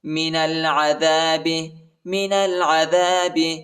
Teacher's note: نون کو لام کے ساتھ ملائیں گے، الف نہیں پڑھا جاتا، الف کے اوپر حرکت نہیں ہے۔